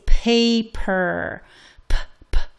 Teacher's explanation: in English for instance we say paper PP you release that puff of air well in Spanish you're going to say it much much um